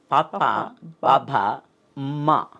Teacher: ద తాళువు సహాయంతో పలుకుతాం అండి పభ మటిని పెదవిని ఓష్టము అంటారు కాబట్టి పెదవుల కలయికతో కలుపుతాం కాబట్టి దాన్ని ఓష్ట్యాలు అన్నారండి